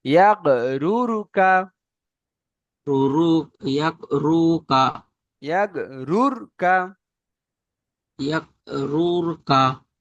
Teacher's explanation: যখন র এর উপরে জাবার বা পেশ হবে তখন রটি পুর হবে, মানে মুখ গোল রটি করে পড়তে হবে।